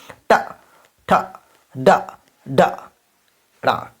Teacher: मूर्धन में क्या होता है, देखिए मूर्धन बोलेंगे टा, टा, ये ना दांत के अंदर, ये ऊपर वाला दांत है ना, उसके थोड़ा अंदर जाइए, तब ये मूर्धन का हो गया